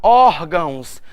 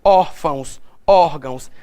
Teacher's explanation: Quando eu parto para órgãos, a minha sílaba tônica está em OR. Então eu sei que ela é uma paroxítona.